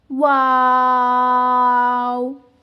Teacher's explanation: हमारे जो होठ हैं उन दोनों को दोनों होठों को गोल करने से वाओ जो है बनता है। · ان دونوں ہونٹوں کو گول کرنے سے واو جو ہے بنتا ہے